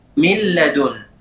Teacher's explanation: Huruf nun benar-benar hilang. Dimasukkan ke huruf setelahnya, yaitu lam ataupun ra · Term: idgham